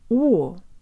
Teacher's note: in English the letter O closes to an O sound oh-oh but Russian does the opposite it opens either from an O to an a sound or from an